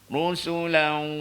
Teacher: Dengung tu tarik elok masuk ke hidung. Rusulan. Kalau tak masuk.